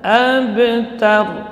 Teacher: Abtar, ta-nya tipis, yang tebal ya huruf ra.